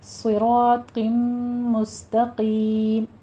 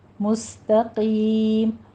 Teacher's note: سین کی آواز سیٹی کے ساتھ باریک نکلے گی، اس کو صاد نہیں بنانا